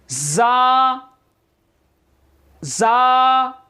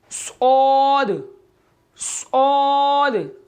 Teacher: इनका कायदा है ज़ुबान की नोक और दोनों दांतों के अंदरूनी किनारे से अदा होते हैं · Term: हरूफे सफ़ीरिया